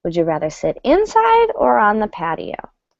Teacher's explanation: Right, so we go down at the end, but the first choice gets high intonation.